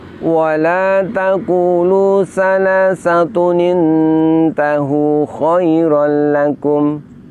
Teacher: dhammah tanwinnya itu diganti bunyinya, diganti menjadi nun berharokat kasroh. Nun berharokat kasroh ini diletakkan di bawah hamzah wasol.